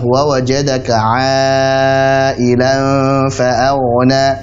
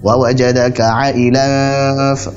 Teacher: Ailan itu harusnya dibaca sebagai mad wajib muttasil 4 harakat.